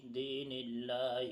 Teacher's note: لفظ اللہ سے پہلے نون کے نیچے زیر ہے، اس لیے لفظ اللہ کے لام کو باریک پڑھا جا رہا ہے